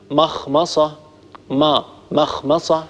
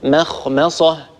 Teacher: ننتقل إلى خاء مستعلية ثم نعود إلى ميم مستفلة ثم ننتقل إلى صاد مستعلية.